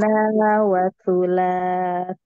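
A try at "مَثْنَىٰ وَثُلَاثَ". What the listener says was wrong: Nafas aja. Masna yang mas yang saat pertama yuk di nafasnya. jangan sampai es ya.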